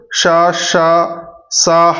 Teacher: వీటిని గాలి ఊదడం ద్వారా ఉచ్ఛరిస్తారు కాబట్టి వీటిని ఉష్మాలు అంటారు